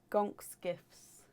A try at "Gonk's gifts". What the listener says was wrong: You're missing a T. Gonk's gifts.